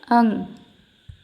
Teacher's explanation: अंग के उच्चारण में जो है ध्वनि केवल नाक से निकलती है। जबकि अनुनासिक में नाक और मुंह दोनों से निकलती है। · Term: अनुस्वार